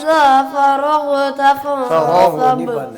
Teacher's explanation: غین کے اوپر قلقلہ مت کریں، ہلائیں مت